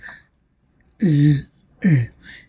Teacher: the tip and the blade of the tongue get in contact with the hard palate. So, as a result, the air escapes from the sides of the mouth. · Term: lateral